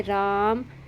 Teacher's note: तीन मात्राओं का समय लगता है यानी दीघा स्वर से थोड़ा अधिक समय लगता है जैसे राम